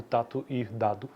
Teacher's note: falantes do Krenak, que é essa língua, interpretam palavras do português como tato e dado, como sendo homófonas